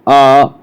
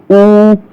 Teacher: जब ऊ बोलेंगे तो हमारे ओंठ किधर को जाएंगे, आगे को जाएंगे। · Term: ओष्ठ वर्ण